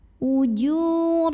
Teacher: Huruf ra dibunyikan dengan tafkhim karena barisnya di atas fathah, maka bacanya tebal, pangkal lidah dinaikkan.